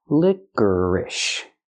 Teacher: put the stress on the first and third syllable